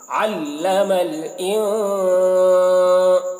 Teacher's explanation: ما لم يعلم، یہ علم، ٹھیک ہے، عین ہے تو علم، عین کو ظاہر کرنا ہے، حلق سے اس عین کو ادا کرنا ہے